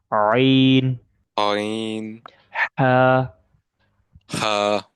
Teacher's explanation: these 2 letters are pronounced from the middle part of your throat. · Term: throat letter